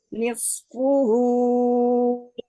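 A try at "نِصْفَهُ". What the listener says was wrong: Nisfahu. Nis, nisfahu bukan puhu. nisfahu. Nisfahu.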